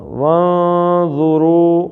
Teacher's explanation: نون کو تھوڑا سا ناک سے نکالنا ہے، منہ سے نہیں نکالنا